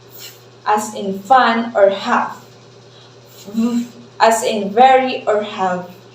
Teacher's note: that that this causes the air turbulence that we can hear it's really the friction of the air passing through this little small opening that we can hear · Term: frbs